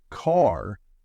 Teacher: American accent often uses a strong R sound